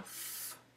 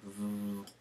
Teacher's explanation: that's an F sound, F, unvoiced, in contrast to a V sound, V, where you will feel vibration if you put your hand on your throat